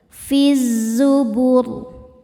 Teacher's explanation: Alif lamnya dinamakan alif lam syamsiyah karena alif lam menghadapi huruf syamsiyah yaitu zai. Maka alif lam tidak dibaca, masukkan langsung ke zai. Fiz zubur. Saat berhenti di huruf ro, ro-nya dibaca tafkhim karena sebelumnya dhammah.